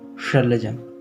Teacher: ये तालव्य श है, तो तालू में जीभ सटती है, तो कंठ के ऊपर तालू होती है, तो जीभ को जितना अंदर कर सकें वहां पे जीभ को सटाएं।